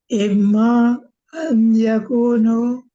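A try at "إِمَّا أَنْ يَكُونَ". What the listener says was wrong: Jangan yakunu. Ini ayakuna karena an. Imma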